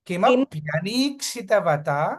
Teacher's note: ఆ stress point కిమప్య, ఆ ప్యా దగ్గర పెడితే బాగుంటుంది.